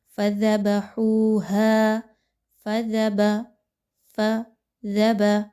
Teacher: زال کو نرمی کے ساتھ پڑھیے، زا کی طرح نہیں پڑھنا، زبان کو تھوڑا سا باہر نکالیے، دانتوں کے درمیان میں دیجئے